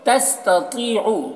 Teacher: تستطیعو، تو کو پر پڑھیں گے، یہ حروف مستعلیہ میں سے ہے، اور یا مدہ ہے یہاں پر تو اسے ایک الف کے برابر کھینچیں گے